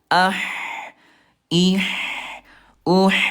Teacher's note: lemah nih huruf ha dia mengalir